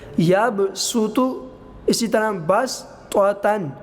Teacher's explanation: ہم نے سین کے ساتھ پڑھنا ہے، سیٹی کے ساتھ پڑھنا ہے، سواد نہیں پڑھنا